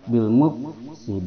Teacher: Hames pada Fa maka ada hembusan nafas yang keluar yaitu di antara gigi atas ujung gigi atas disentuhkan pada bibir bawah dia ada hembusan napas